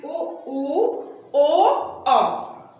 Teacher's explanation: इनका उच्चारण करते समय ओष्ठ गोलाकार हो जाते हैं। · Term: वृत्तमुखी